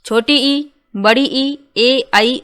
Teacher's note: स्वरों का उच्चारण करते समय जिह्वा का अगला भाग सक्रिय रहता है उसे अग्र स्वर कहते हैं।